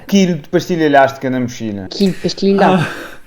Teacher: a letra L, o som L, é substituído pelo som lhe quando vem depois de um I e antes de uma vogal. Quilo fica quilho, elástica fica ilhástica e mochila fica mexilha.